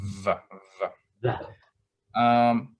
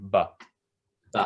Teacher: So the difference is with va, you can kind of hold that out. You can say va. You can't hold it out with ba. Just ba. And your lips come all the way together with the harder one, ba.